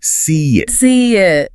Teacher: between a word ending in a high front vowel sound, like the E in see it, a tiny I sound is often inserted. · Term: vowel-vowel bridging